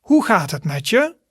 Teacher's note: So there is a bit of stress on the je part, which means you.